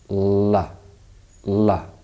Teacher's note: this sound is produced by placing the tip of the tongue against the alveolar Ridge while lowering the sides of the tongue and producing a voice sound this gives the sound its technical name the voiced alveolar lateral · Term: voiced alveolar lateral approximant